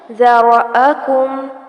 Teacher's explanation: ذال کو نرمی سے پڑھا جائے گا اور را کو پر کیا جائے گا۔ یہاں پر دھیان رہے کہ کوئی بھی حرکت لمبی نہ ہو۔